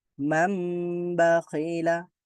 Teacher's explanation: ন সাউন্ডটা ম হয়েও এখানে একটু দেরি করতে হবে, একটু গুন্না হবে, এটাকে বলা হয় গুন্না।